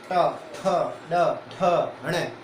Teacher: आपकी जीभ क्या होगी? जीभ टकराएगी मूर्धा से, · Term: मूर्धन्य